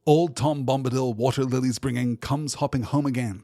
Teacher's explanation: Unusually for Tolkien, it is arranged in trochaic heptameter with 7 pairs of syllables in each line. Each pair has the first syllable stressed, a stressed, unstressed pair. That is a trochee.